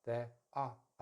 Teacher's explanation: I'm going to put the R as a schwa.